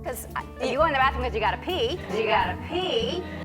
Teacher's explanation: In American English, when a T sound is surrounded by two vowel sounds, the T sound becomes a soft D.